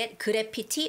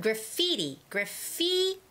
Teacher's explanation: fee has the stress